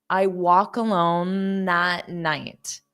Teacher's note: Instead of saying walk, and then the K sound is on walk, what happens is I actually transfer that sound to the next word. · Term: linking